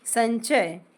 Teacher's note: अब इसमें हमने इस अनुस्वर को ञ पढ़ा।